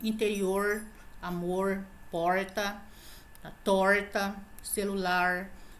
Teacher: É quando a língua ela faz uma retroflexão, ou seja, ela se dobra para trás. Isso é bem típico do interior de São Paulo. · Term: R retroflexo